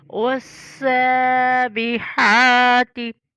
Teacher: सीन में सीटी की आवाज़ आए। वस्साबिहाती गले के दरमियान से हा और लंबा करना है खड़ी ज़बर की वजह से, और आगे बा को कलकला करना है।